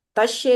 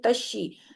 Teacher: زیر کی آواز کو ای کے ساتھ پڑھیں گے، اے کے ساتھ نہیں پڑھیں گے